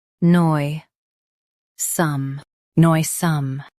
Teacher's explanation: Stress noi and keep some light.